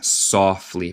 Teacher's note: En mi acento, yo no digo T, softly, pero tú puedes decir softly y está bien también.